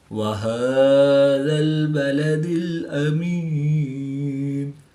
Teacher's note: یا ساکن سے پہلے زیر ہے تو یا مدہ کے بعد نون کی زیر کو وقف کی حالت میں ساکن کر دیں گے تو یہاں پر وقف کی حالت میں مد عارض ہوگی، 2 سے 3 الف تک کھینچ کر پڑھیں گے